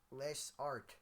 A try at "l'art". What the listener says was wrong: No, l'art. You don't pronounce the S. It's just there.